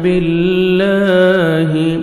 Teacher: لام کو اپنے باریک پڑھنا ہے اور 1 سیکنڈ کھینچیں گے